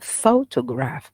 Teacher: photograph it has three syllable and the stress is on the first syllable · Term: primary stress